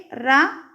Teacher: நாவின் நுனி மேல் அன்னத்தின் முதல் பகுதியை தொட்டு வருவதால் தோன்றும் எழுத்து